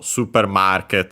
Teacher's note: For supermarket, market on its own would be accented on the ma, again, just like in English. And when combined, the accent that stays is the one for market